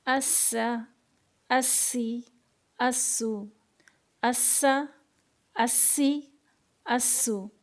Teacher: سین ہے تو اس کو سیٹی ایسی آواز آنا چاہیے کیونکہ سفیریہ میں سے ہے یہ. اسا اسی اسو اسا اسی اسو.